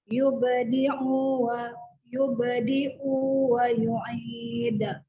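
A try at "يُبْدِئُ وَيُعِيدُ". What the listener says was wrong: Nah, tadi pertama hamzahnya terbaca ain. Udah benar, u-nya kepanjangan. Jangan, 1 harokat aja.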